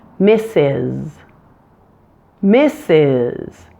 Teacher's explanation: that final s has voicing on it